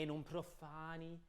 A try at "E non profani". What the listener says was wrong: No, not a double N.